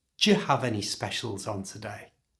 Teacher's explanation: To say this naturally, change the do and you to the j sound